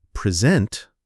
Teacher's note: If you say present, stress on the first, it's a speech. · If you say present, stress on the second part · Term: word stress